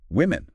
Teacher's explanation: That O sounds like a short I like in win. It's not like the O in woman singular which is more like would.